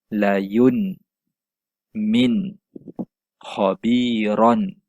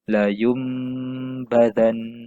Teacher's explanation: tukarkan bunyi nun mati ataupun tanwin kepada huruf mim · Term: iqlab